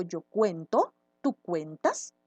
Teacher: se va a convertir en su transformación mágica del verbo en un diptongo vocal cerrada y vocal abierta